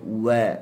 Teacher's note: huruf waw, wa istidaratul fam, mulut kita dia membulat lah. Wa dia tak sampai kepada tahap kita dhammah.